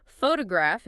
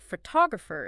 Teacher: photograph is stressed on the first syllable, but photographer is stressed on the second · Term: word stress